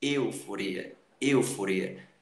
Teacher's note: Mesmo que não haja acento circunflexo para fechar o som do E, você tem essa pronúncia correta, euforia, euforia, ok? Então isso é um ditongo fechado, porque tem duas vogais, uma vogal e uma semivogal na mesma sílaba, e o som da vogal é fechado